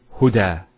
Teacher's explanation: There's the elongation as well, because the fatha followed by an alif. If this wasn't there, it will be huda.